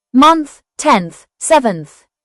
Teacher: It combines the nasal n sound with the th sound to form a single phone.